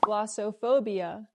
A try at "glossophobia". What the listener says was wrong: The word is not pronounced glossophobia. The O in the middle is not pronounced with the long O like no and go. It's not glossophobia, it's glossophobia. The O in the middle makes a short sound like cup and up. It's relaxed and closed. Glossa, the second O. Glossophobia.